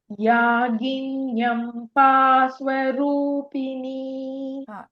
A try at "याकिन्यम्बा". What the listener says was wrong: This ka, no, in Yakinyamba, it is ka. I'm hearing it as a bit of ga there. Yakinyamba Swarupini.